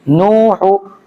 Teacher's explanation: نوحو مت کیجیے گا، ہا کو بالکل بھی نہیں کھینچنا ہے، ہا کے اوپر پیش ہے